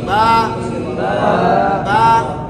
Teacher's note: با میں ہونٹ سختی سے ملتے ہیں, لیکن اس طرح سختی سے بھی نہ ہو کہ ایسے بن جائے, اگلے کو محسوس نہ ہو, آپ کو خود محسوس ہو.